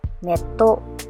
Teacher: with the presence of chisaitsu, the consonant T was doubled